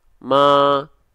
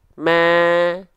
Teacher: Kedengarannya lebih tipis. Kenapa? Karena kita hadirkan dengan pelafalan dengan senyuman.